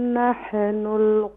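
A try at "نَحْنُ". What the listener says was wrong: नाहनु नहीं, यहाँ पर कलकला नहीं करेंगे। नहनु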